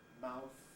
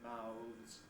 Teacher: mouth the voiceless in the singular but mouths voiced